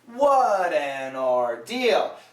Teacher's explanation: So here we have a flap T sound. It links to the next word.